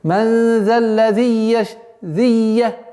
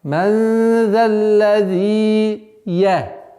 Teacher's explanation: чтобы удлинение, естественное удлинение звука «зи» не ассимилировалось со следующим звуком «я»